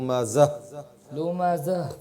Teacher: आखिर में हा की आवाज है लुमाजा लुमाजा हा को साकिन करेंगे